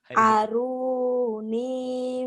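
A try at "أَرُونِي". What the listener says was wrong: Aru, runya panjang.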